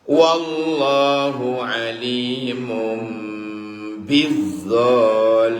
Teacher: Tanwin ketemu ba. Di atas tanwin ada mim kecil. Itu pertanda harus mingkem.